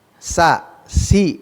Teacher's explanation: huruf sa itu memiliki sifat al infitah, harus terbuka, lepas lidahnya dengan langit-langit. Sa, si, lepas.